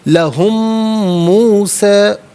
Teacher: یہ لا اصل میں لی ہے، ہم کے ساتھ استعمال ہونے کی وجہ سے اس کو لا پڑھا گیا. لہم موسیٰ، لہم میں میم ساکن ہے، اسے موسیٰ کی میم ساکن کے ساتھ ملا کر میم کی آواز کو ہی غنّے کے ساتھ ادا کیا جائے گا